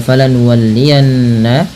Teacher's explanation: Kemudian pada lafal falan qibl yanna tahan bunyi suara nunnya pada lafal falan nuwallianna karena ia termasuk bacaan gunah dengan menahan bunyi suara n atau bunyi suara nunnya sepanjang dua harakat